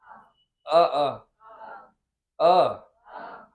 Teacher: जीभ के मध्य भाग से केवल एक ही स्वर का उच्चारण होता है, वो है अ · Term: मध्य स्वर